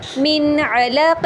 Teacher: اظہار کے ساتھ، یعنی نون ساکن کو ہم واضح اور ظاہر کر کے پڑھیں گے